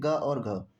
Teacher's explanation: ग और घ जो है ये कंठ से उच्चारित किया जाता है